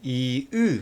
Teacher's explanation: 으처럼 혀의 최고점이 뒤로 쭉 당겨지는 당겨지는 모음을 후설 모음이라고 할 거예요.